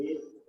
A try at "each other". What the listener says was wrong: Ok, ahí lo va a decir junto. Each other. Each other. No, each other. Únala. Each other.